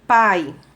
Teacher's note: ele é classificado como um ditongo oral, porque o ar sai pela boca, e ele também é classificado como um ditongo decrescente, porque primeiro veio a vogal, em seguida veio a semivogal.